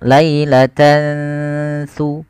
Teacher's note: Yaitu cara membacanya tan awalnya lailatan, ketemu saat tidak jelaskan suara n-nya. Tidak jelaskan suara nun, tidak dibaca lailatan summa. Tapi disamarkan, maka dinamakan dengan ikhfa. Ikhfa itu bacaan kita antara bacaan izhar dengan idgham.